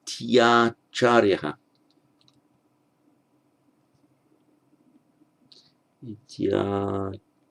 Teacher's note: E followed by an a becomes a ya.